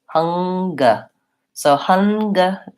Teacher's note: So Hungary is like finger, where we say both the NG and the G. So in that word, we have a H, we have the stress schwa, H, so the NG, the sound, and then the G sound.